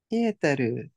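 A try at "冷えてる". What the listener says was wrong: Hai.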